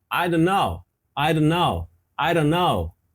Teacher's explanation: Fica só uma ameaça de T, fica quase imperceptível ali